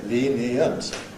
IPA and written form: ˈliːn-i-ənt (lenient)